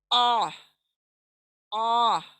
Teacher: गले के बीच के हिस्से से, सेंटर ऑफ द थ्रोट, यहां से अदा होने वाला है ये आइन।